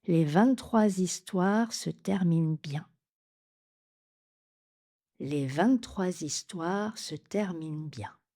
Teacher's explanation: il faut bien faire une liaison en Z.